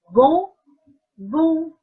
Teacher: The ON comes from my nose.